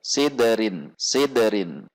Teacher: Dal sukun memiliki sifat qalqalah sehingga saat sukun dia akan memantul, dan jika di tengah kata seperti ini maka pantulannya tidak boleh terjeda dengan huruf selanjutnya.